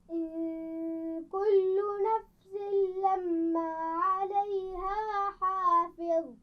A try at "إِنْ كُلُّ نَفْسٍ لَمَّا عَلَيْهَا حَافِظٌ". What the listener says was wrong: لما میم پر غنہ بھی ہو رہا ہے.